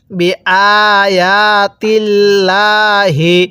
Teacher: আল্লাহ শব্দের লামের পূর্বে যদি জের থাকে তাহলে চিকন করে পড়তে হয়